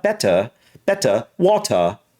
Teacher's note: it's almost like the r is turning into a version of an a a little bit